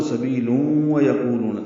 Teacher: تنوین کے بعد وہ آنے کی وجہ سے ادغام ناقص کرنا ہوگا اور وہ پر تشدید لانے ہوگی، آواز ناک کے بعد سے مل جائیں گی۔